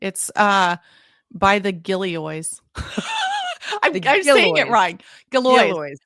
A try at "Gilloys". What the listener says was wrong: No, the emphasis is on the Gill. Gilloys.